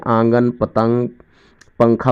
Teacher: نون غنہ اس نون کو کہتے ہیں جو ناک میں چھپا پڑھا جائے